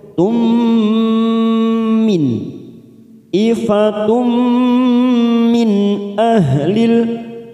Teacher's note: ada huruf nun sukun bertemu hamzah namanya idhar halqi, kita baca jelas tanpa mendengung. Min ahlil masuk pada alif lam qamariyah lam ta'rif.